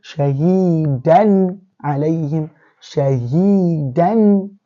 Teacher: the fathatan here is being pronounced showingly, vividly. We can hear it. It's not been hidden. It's not been changed. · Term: izhar